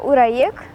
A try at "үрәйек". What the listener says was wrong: Звук У надо произносить немного уже.